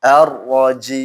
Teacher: Ini kan mata sukun. Dipanjang dulu teman-teman, baru ke mimnya. Jangan ar-rajim, enggak boleh.